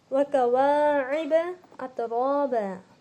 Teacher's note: عین کی آواز حلق سے آئیں گی، الف کی آواز نہیں نکلتی حلق سے، اترابا الف میں آواز نہیں نکلتی۔